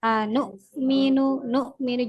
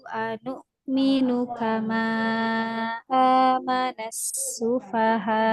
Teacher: di sini huruf hamzah itu dia ketika sukun maka tertahan suara dan nafasnya. Huruf hamzah ada di pangkal tenggorokan.